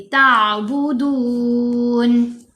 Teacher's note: تا کو آئین ساکن سے ملائیں گے، جھٹکا نہیں دیں گے، لہر کی طرح آواز گلے میں جائے گی